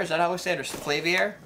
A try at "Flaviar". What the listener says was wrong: Oh, and he's just gonna throw extra syllables in there.